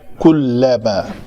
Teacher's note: کلما کاف کے اوپر پیش ہے تو اس کو ہم شفتین، اس کے لیے دونوں ہونٹ جو ہیں وہ گول ہو جائیں گے اس طرح۔ کلما لام پتلا ہے، اس لام کو پتلا پڑا جائے گا